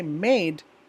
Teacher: So when you say made, we have eh and e vowel sounds combined within this word. You can feel your tongue moving closer to the roof of your mouth when you say it. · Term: diphthong